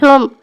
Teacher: میم دونوں ہونٹ بند کر کے ادا ہوتا ہے۔ ہا پر پیش ہے، میم ساکن ہے۔